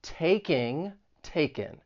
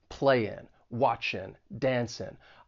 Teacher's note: You're going to drop that G in those ing words. So it's really a difference between ing and in.